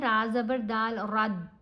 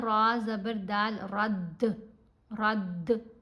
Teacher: जब ये 5 हरूफ साकिन हों या वक्फ करने की सूरत में साकिन पड़े जाएं, हमने इनके ऊपर कलकला करना है। कलकला करते हुए आपको ऐसा फील होता है जैसे इसकी आवाज़ ना आपके मुंह में टकरा के वापस आ रही हो।